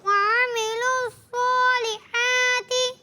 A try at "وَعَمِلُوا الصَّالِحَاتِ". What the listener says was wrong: مائک لیں آپ سنائیں، تھوڑا سا ناک سے بچانے کی کوشش کریں، وعملوا الصالحات، کلیئر،